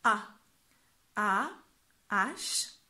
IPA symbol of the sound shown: a